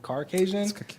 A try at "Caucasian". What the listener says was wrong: Caucasian. He throws an R in there somewhere. Definitely not hard R.